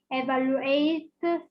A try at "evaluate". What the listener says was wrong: This is not evaluate. This is E. E in English. E, evaluate.